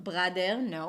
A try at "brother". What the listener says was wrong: And it's a cup sound. So don't open your mouth. It's not bro, although there is an O there.